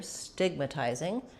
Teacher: we have first syllable stress here